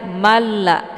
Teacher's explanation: Kemudian malla, ada tanwin fathah bertemu dengan huruf lam, maka ini hukum bacaannya adalah idgham bila gunnah. Jadi cara bacanya di sini tanwinnya kita masukkan ke dalam huruf lam dengan cara ditekan tapi tidak ditahan. Karena hukum bacaan idgham bila gunnah ini dia tidak berdengung.